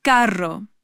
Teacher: This is the famous rolled R or trilled R. It requires a strong roll of the tongue. This one takes practice.